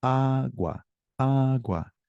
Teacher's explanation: The intonation is on that first syllable.